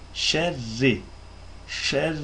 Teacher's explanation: Rr diye kalın okunamaz çünkü ra esreli.